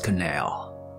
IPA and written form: kəˋnæl (canal)